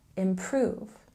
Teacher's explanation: And a stress on the second syllable here in improve, improve. And we're reaching the final part of this course, so let's move on to linking words of conclusion.